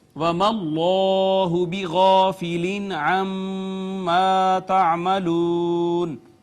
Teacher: اس میں جلالت کا ماقبل یہاں پہ مفتوح ہے، اس کو ہم نے پر کر کے پڑھا، پھر الف المدیہ الصغیرہ ہے، الف مدہ ہے، یہاں نون تنوین کے بعد حرف اظہار عین، لہٰذا یہاں پہ اظہار ہو گیا، میم مشدد، یہاں پہ غنہ، پھر الف مدہ ہے، اس کے بعد واو مدہ۔